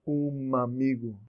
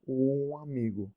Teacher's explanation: You don't close your lips to the M in amigo.